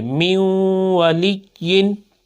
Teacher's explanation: اب کیا ہے، لام کے بعد یا مشدد ہے تو یا مشدد کو جب دوسری مرتبہ پڑھیں گے تھوڑا سا رکیں گے